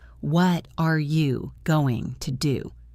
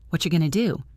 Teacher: The words, what are you? blend into whatcha, and going to becomes gonna.